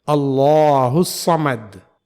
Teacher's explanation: یہاں لفظ اللہ سے پہلے زبر ہے اس لیے ہم اس کے لام کو موٹا پڑھیں گے